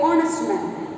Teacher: H is silent. H we don't pronounce.